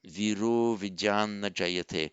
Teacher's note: By Santi, the final ah followed by the initial short ah becomes o.